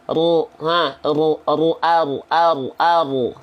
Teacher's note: Huruf ro bukan dilafalkan dari ujung lidah ke langit-langit, tapi huruf ro dilafalkan dari punggung lidah